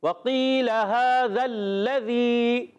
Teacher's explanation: تو لام مشدد ذرا رک کر ادا کریں گے